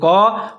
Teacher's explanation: قاف اور الف دونوں موٹے پڑے جائیں گے۔